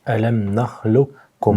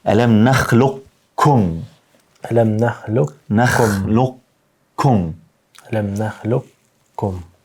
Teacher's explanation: Hynë në kaf, ama nuk ndahesh, nuk shkputesh, që të vrehet kafi qartë. Por që ndodh, vazhdon me kaf, edhe shtrengon. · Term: idghami